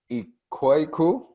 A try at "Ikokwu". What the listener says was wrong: Ikoku, you almost was there. Ikoku. W silence.